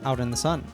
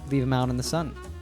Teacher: T at the end of out is pronounced with an American T so we hear out in the sun